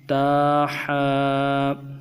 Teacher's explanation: حا کو گہرائی سے پڑھیں گے اور گلے کے اندر سے سختی سے تھوڑا سا نکالیں گے۔